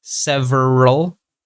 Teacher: so from the R sound, we immediately go to the L sound